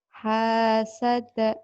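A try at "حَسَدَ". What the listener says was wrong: Pendek, gak ada yang panjang ini mah.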